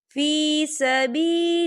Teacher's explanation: अल्लाह का नाम बारीक पढ़ा जाएगा क्योंकि अल्लाह के नाम से पहले ज़ेर है